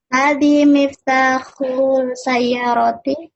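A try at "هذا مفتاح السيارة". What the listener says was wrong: Intonasinya pertanyaan. Berarti intonasinya bukan miftahus sayyarati, itu pertanyaan. Bagaimana kalau bukan pertanyaan? Hadi miftahus sayyarati. Baik, ini salah Ibu ya. Yang benar bagaimana harusnya? Iya, hada. Bagaimana jadinya? Hada.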